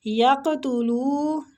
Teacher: قاف مستعلیہ پور پڑھنا ہے اور قلقلہ بھی کرنا ہے قاف پہ